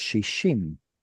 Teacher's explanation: Dalit and sheen were pronounced in the same place, so it assimilated. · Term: assimilating dalet